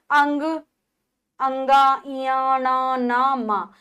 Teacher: ये नासिका के द्वारा बोले जाने वाले व्यंजन है इसलिए इनको नासिक्य कहा जाता है।